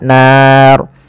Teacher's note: RO di sini kita hukumi dengan ro yang tebal tidak boleh dibaca dengan ro tipis Kenapa karena dia adanya huruf ro yang disukunkan sebelumnya fathah panjangnya